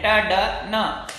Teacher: और उसके अलावा ड ये भी वहीं टच कर रहा है, न वो भी वहीं पर टच कर रहा है। तो टी डी एन जो है उसको एल्वियलर रिज और टच करती है टिप ऑफ द टंग, उन दोनों की सहायता से टी डी और एन, ट ड न ये साउंड बोलते हैं।